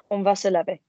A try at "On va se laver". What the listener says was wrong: That's it.